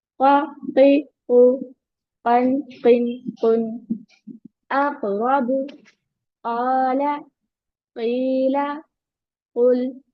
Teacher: एंड जो second ये वाला काफ है, इसको touch the inner part of the tongue, टंग के इनर पार्ट से टच करना है to the roof of the mouth right at the बेक behind the यू वाला। तो यहाँ जो यू वाला होता है उसको बिहाइंड टच करना है, a little inside, थोड़ा सा उसके अंदर।